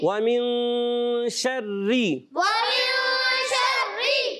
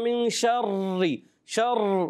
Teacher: را میں تکرار اصلی نہیں ہونا چاہیے، مشابہت تکرار ہوتی ہے